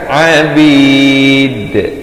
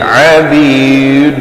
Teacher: Dan dal bila waqaf pepeskan